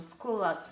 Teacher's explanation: we don't say double L we just make the sound a little bit longer